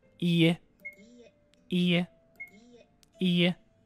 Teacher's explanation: you draw out the length of the sound it's not quite the same as repeating the vowel twice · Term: repeated vowels